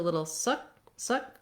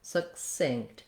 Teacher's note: my first syllable is going to be short it's going to have a reduced vowel in this case it's vowel schwa it sounds like uh so we're going to have just a